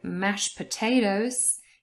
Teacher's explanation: if you say it fast, the t in mashed disappears, so there is elision.